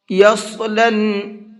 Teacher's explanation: صاد کو منہ بھر کے پڑھیں گے